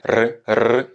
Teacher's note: Pour le R, on roule, attention, on ne roule pas là par contre avec la gorge, mais on va plutôt le chercher au niveau de la langue. C'est une vibration de la langue, le R roulé espagnol, ça va donner R.